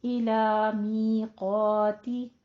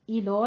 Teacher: इलो नहीं है, इला ला बारीक रखिएगा, मीक़ाती, मी 2 काउंट करना है, क़ा को भी 2 काउंट करना है, लेकिन क़ाफ को पुर अलिफ पुर हो जाएगा।